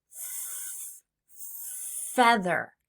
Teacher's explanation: I rest my top teeth right on my bottom lip and I gently push the air out. My voice is off. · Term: F sound